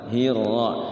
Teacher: Ini rohnya itu terlalu getarnya banyak ya. Jadi getaran itu jangan terlalu banyak. Hirra cukup 1 atau 2 ya, 2 getaran. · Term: makhraj ra